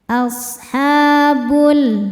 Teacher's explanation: Ha mad tabi'i muqaddar karena ada huruf ha dengan harokat fathah panjang. Cara bacanya panjang 2 harokat.